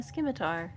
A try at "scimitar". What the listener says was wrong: I can't believe you just mispronounced scimitar. There's no K in there.